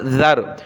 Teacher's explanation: ذال پر زبان نکالی جاتی ہے، ذال کو را کے ساتھ ملایا، ذال را زبر ذر.